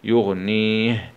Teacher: نقف عليه بالسكون العارض مع الهمس